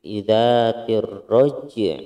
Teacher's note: ainnya masih harus terdengar meskipun sedikit terdengarnya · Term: qalqalah sugro